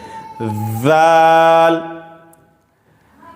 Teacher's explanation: ذال، زبان کی نوک کو اوپر والے دانت سے ٹچ کر کے پڑھیں گے